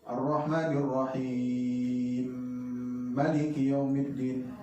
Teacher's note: Karena mim ketemu mim ini mislain sama, itu dilebur. Jadi cara bacanya mim pertama dilebur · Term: idgham kabir